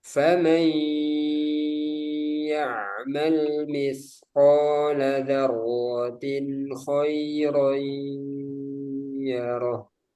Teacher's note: tanwin bertemu kha jangan didengungkan. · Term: izhar